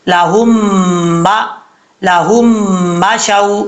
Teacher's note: जिस मीम के ऊपर शद है उस मीम के साथ कनेक्ट करेंगे और गुन्ना करेंगे एक अलिफ की मकद · جس میم کے اوپر شد ہے اس میم کے ساتھ کنیکٹ کریں گے، اور غنہ کریں گے 1 الف کی مقدار ، کیونکہ یہاں پہ ادغامی جر معلوم ہو رہا ہے۔ لاہم